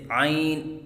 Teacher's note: ناک میں آواز لے کے جانا، جیسے عین، یہ غلط ہے